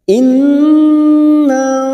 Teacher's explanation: In nun yang bertasdid gunna musaddadah kita tekan selama 3 harokat,